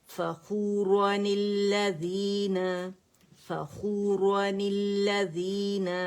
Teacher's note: ٹھیک ہے، عادن الاولی، لمزۃ الذی، لمزة الذي فخورا الذین فخورا الذین، اسے کھینچیں گے نہیں، ٹھیک ہے، کیونکہ میں نے کہا ہے نا تنوین ہم نے توڑی تو الف بھی نہیں پڑھا جائے گا، مد نہیں بنائیں گے اسے